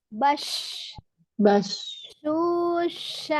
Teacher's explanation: Tengah lidahnya tuh tetap agak menyentuh ya sambil mengarah ke langit-langit sampai dia mengucapkan sya. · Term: Shin